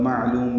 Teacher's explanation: معلوم میں عین ساکن پہ اظہار ہے، لام باریک ہے، لو واو مدہ ہے